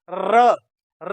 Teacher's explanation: जब हम उच्चारण कर रहे हैं तो हमारी जीभ में कम से कम सात बार कंपन हो रहा है अधिकतम की कोई सीमा नहीं है कम से कम सात बार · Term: कंपन जात ध्वनि